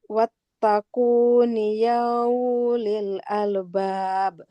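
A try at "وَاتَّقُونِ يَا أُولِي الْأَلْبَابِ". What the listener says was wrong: Bukan yau, tapi ya ulil albab. Yang pertama tadi untuk harokatnya ya. 2 kali keliru. Nah, perhatikan harokatnya. Kemudian panjang pendeknya ya.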